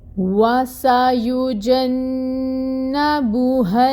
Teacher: جیم کے اوپر فتحہ 1 کاؤنٹ، انفتاح ہوگا۔ نون مشدد ہے، ٹائم ٹیکنگ ہوگا، یعنی غنہ 2 کاؤنٹس کے برابر، اور فتحہ کی جو حرکت ہے اس کو ہم 1 کاؤنٹ ہی ادا کریں گے۔